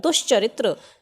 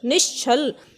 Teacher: देखिए ये च है और ये छ है, तो च और छ का उच्चारण स्थान क्या है, तालव्य ही तो है, तालु से ही तो होता है इनका उच्चारण। तो अगर च या छ हो तो जो विसर्ग है ये तालव्य श में बदल जाएगा।